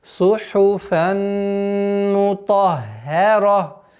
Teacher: Легче произносить сухуфан, но нужно обращать максимальное внимание, чтобы было сухуфан, сухуфан, сухуфан. Здесь тоже у нас идгам, ассимиляция, полная назализация в размере двух огласовок. И удерживаем.